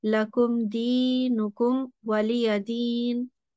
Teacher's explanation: the meme will be said clearly for 1 second